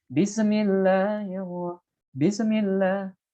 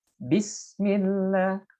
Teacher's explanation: huruf sin itu tidak boleh memantul